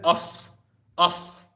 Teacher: If you blow air from your lips, that is uff, uff. That is the upadhvaniya.